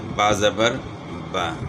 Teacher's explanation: زبر تو آسان ہے، آدھے الف کی آواز ہے